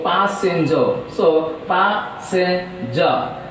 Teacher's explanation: Here trisyllabic word, as it is a trisyllabic word, stress takes place on first syllable.